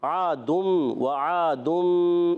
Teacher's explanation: نون ساکن تنوین کو میم سے بدل کر پڑھتے ہیں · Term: اقلاب کا قاعدہ